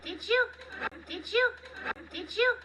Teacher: when one word ends in D and the very next word begins with a Y, we create a J sound.